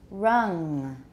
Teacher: example let's try both of them again make the vowel longer the final nasal is not very long it's just a little bit affixed to the end